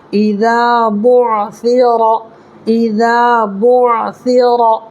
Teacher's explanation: را کو پر کر کے پڑھنا ہے اس لیے کہ را کے اوپر زبر ہے